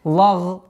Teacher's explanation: С мягкого произношения лям на твердое произношение гайна.